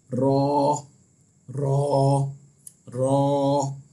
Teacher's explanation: और रॉ का जो मखरज है वो ये है कि ज़बान का किनारा ऊपर के दांतों की जड़ के जो करीब तालू है वहां से अदा होता है।